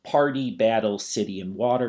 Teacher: Those are always going to have a D syllable, whereas a British person will pronounce the T, or they will use glottal reinforcement. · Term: linguistic flapping